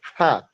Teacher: it's voiceless bilabial plosive